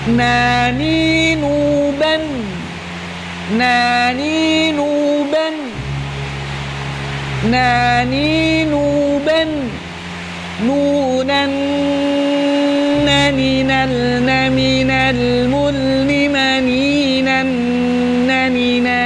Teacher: Makhrajnya huruf nun adalah keluar dari ujung lidah menempel pada gusi 2 gigi seri atas.